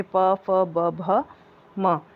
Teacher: प वर्ग में आने वाले पांचों अक्षर आपके प, फ, ब, भ, म यह आपके होते हैं ओष्ठय ध्वनि, ओष्ठ व्यंजन